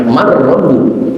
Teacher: Cuman idghamnya idgham tam, artinya idgham sempurna. Sampai sempurna masuknya suara nun ke huruf ro, tidak terdengar sedikit pun sisa, maka disebut idgham tam.